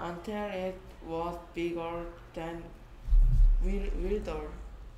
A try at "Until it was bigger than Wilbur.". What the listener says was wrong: 또 B가 D로 보인다. Will 더 D야 드 소리 나게. B다 V 소리 난다.